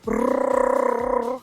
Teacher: The next one is a rolled R, or the double R. It's basically the same as the Japanese R, but multiple times. It takes more breath to make this noise, and it's kind of like a purring noise almost. It's a brrrr.